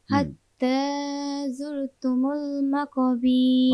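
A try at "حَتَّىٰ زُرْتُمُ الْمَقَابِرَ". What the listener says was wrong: মাকাবির, হ্যাঁ সামনে বীর, তাড়াতাড়ি। মাকাবির। বীর দেরি করে যাবে না। বীর, মাকাবির।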